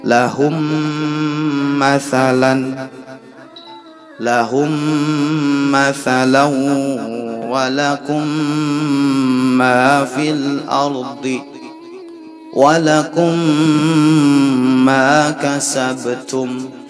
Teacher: jadi diidghamkan kemudian di gunnah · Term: idgham mutamathilain